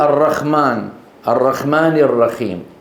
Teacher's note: كتغيير حاء الرحمن بالخاء او بالهاء